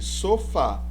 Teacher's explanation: última e veja se caso aqui sofá sílaba tônica fa então última sílaba é pronunciada mais forte · oxítona essa é a palavra em que a sílaba tônica é a última e veja se caso aqui sofá sílaba tônica fa então última